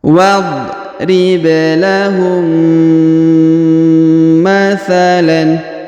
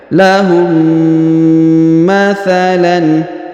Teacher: huruf tanwin an pada huruf lan dibaca jelas atau izhar